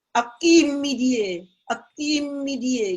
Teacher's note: Please don't act on a. Act on chi.